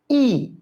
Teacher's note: ই একদম সামনে চলে আসছে এবং ঠোঁট উন্মুক্ত হয়ে গেছে